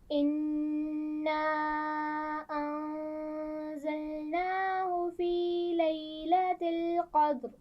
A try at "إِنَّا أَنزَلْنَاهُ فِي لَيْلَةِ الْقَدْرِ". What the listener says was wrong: ایک تو جو مد ہے چھوٹی مد اس کو ٹھیک طرح کھینچیں گے اور ہو ہا کی پیش کو واضح کریں گے. اِنَّا أَنزَلْنَاهُ فِي لَيْلَةِ الْقَدْرِ. أنزلناه في.